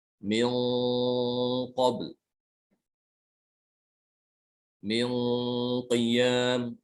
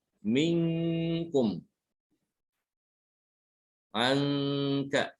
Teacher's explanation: dibedakan antara ikhfa nun sukun ketemu dengan huruf qaf yang tebal dengan nun sukun ketemu dengan huruf kaf yang tipis, itu gunanya beda ya